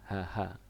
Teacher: ternyata HH itu masuk di tenggorokan bagian tengah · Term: H besar